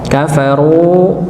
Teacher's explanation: runya dipanjangkan dua harakat wau sukun sebelumnya dammah